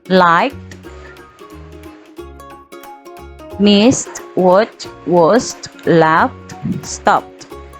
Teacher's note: Akan dilafalkan t jika verb berakhiran bunyi k, s, f, p.